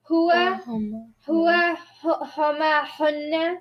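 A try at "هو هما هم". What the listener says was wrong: Huwa huma hum. no N's. Only M's. Huwa huma hum. Hum. Huwa huma hum.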